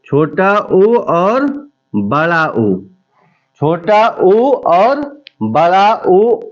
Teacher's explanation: छोटा ऊ और बड़ा ऊ ओष्ठ से बोले जाते हैं